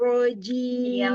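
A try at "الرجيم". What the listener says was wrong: Lebih bagus dibuka ya, Bu ya. Jadi suaranya keluar.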